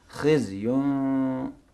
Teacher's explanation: میم بھی مکمل ادا نہ ہو. خز یون، ہوا کا جریان باقی رہے